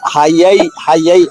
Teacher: ఇప్పుడు మనకి హ గొంతు నుంచి రావాలి య నాలిక మధ్య భాగం రావాలి అక్కడి నుంచి ఒక్కసారిగా నాలిక మధ్య భాగానికి అది మూవ్ అవ్వాలి ఆ ఆ నాలిక మార్పు మార్పు చెందడం అనేది మనకి అలవాటు కావాలి. అంతే